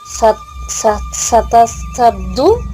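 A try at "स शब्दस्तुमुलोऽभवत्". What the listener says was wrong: సత లేదమ్మా.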